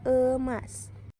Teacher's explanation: Vokal E tengah atas pusat tak bundar pada kata emas.